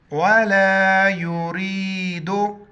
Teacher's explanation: वला युरीदु, रा को या के साथ मिलाएंगे, रा पर ज़ेर, रा को बारीक पढ़ेंगे